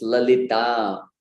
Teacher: Especially devotees from the Western hemisphere tend to put the emphasis on the wrong syllable, on the short vowel.